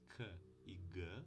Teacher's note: quando a parte de trás da língua encosta no véu palatina no palato mole temos as oclusivas